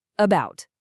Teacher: It's simply a short, weak, totally relaxed uh sound. It's the laziest sound you can make. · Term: schwa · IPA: /ə/